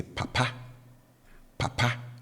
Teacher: the tone on the first syllable is low and then the tone on the last syllable is high